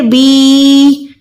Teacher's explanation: اگر یا ساکن سے پہلے زیر آ گئی تب بھی ہم نے یا کو 1 سیکنڈ کھینچ کے پڑھنا ہوتا ہے. وہ ہوتا ہے یا مدہ.